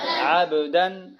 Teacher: غنہ اس لیے نہیں ہوگا کہ حروف حلقی کے 6 حرفوں میں سے عین آ رہا ہے